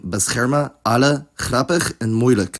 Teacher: Dutch has some vowel reduction, namely to [ə] in prefixes and suffixes